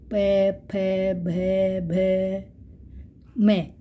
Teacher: यहां पर हम हमारे दोनों होठ आपस में स्पर्श करते हैं